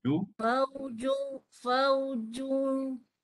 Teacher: Kita nak kenakan tanggam dengung ke hidung tu. Ju lepas ju baru tolak ke hidung dengung. Ju pelan-pelan tolak ke hidung.